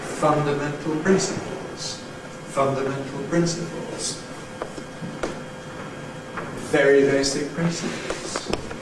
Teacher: what happens in English usually is a switch round of the prominence of these two, so we tend to lose the accent on meant